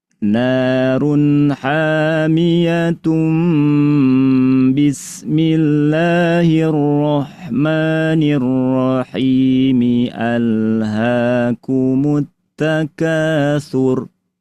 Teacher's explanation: Ditukar suara nun menjadi suara mim, dan itu terjadi hukum iqlab pada tanwin terjadi ketika bertemu dengan ba. Maka dengan merujuk pada teori iqlab, pada kata narun hamiyatun ketika disambung maka berlakulah hukum iqlab.